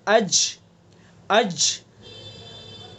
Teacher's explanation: जैसे अज, अज आवाज़ हमारी कहाँ रुक रही है, ज़बान का बीच और उसका मुकाबिल ऊपर का तालु